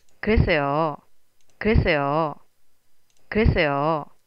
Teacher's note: if it's low for longer and then a sudden rise and a fall, it sounds like you're irritated.